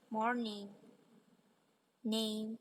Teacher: rongga hidung namun saat belum diturunkan dan aliran udara udara turun dibiarkan mengalir keluar melalui hidung untuk menghasilkan m&n